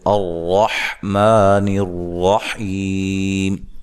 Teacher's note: ویسے اگر ہم یہاں سے ابتدا کرنا چاہتے ہیں تو الرحمن الرحیم، ٹھیک ہے، ایسے پڑھیں گے۔ را کے اوپر زبر ہے، را کو موٹا ادا کریں گے، ما مد اصلی ہے، نر را کو موٹا پڑھیں گے، حی یا مدہ ہے، وقف کی صورت میں مد کر سکتے ہیں۔